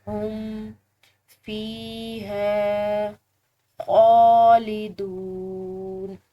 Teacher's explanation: فا کے بعد یا ساکن ہے تو فا کو لمبا ادا کریں گے